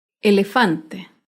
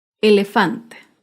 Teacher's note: acá vemos otro ejemplo de una palabra grave sin tilde elefante el elefante se acentúa en la penúltima sílaba